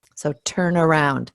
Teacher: So instead of turn around, we have turn around. So actually making the N become part of the next word when we're pronouncing it.